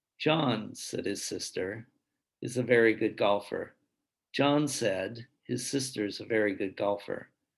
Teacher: you have the pitch of the voice signaling a difference in the grouping of the words · we have a difference in where it sounds like I'm pausing. But in reality, I'm not really pausing. I'm using my voice pitch. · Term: thought groups